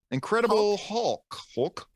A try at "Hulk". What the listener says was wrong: It just sounds weird. It's like Uncle. He's like putting like it's like he's choking on the letters.